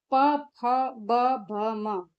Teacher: प फ ब म का उच्चारण करते समय दोनों होठ आपस में मिलते हैं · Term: ओष्ठ